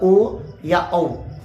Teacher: उसी अ को जब हम गोल कर लेते हैं ओट को तो होता है ओ या औ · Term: कंटो वर्ण, कंठोष्ठ वर्ण